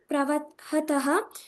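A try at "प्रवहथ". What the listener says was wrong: ಹಾ ಪುಟ ಇಲ್ಲಿ ಮಧ್ಯಮ ಪುರುಷ ಹೇಳ್ಬೇಕಾದ್ರೆ ಮಹಾಪ್ರಾಣಥ ಯೂಸ್ ಮಾಡ್ಬಿಟ್ಟ. ಪ್ರವಹಥ, ಪ್ರವಹಥ.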